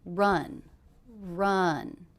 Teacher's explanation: Now this is a question, but did you notice the intonation went down at the end?